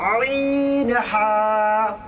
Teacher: 2 নম্বর মাখরাজ হলকের মধ্যখানে হইতে আইন হা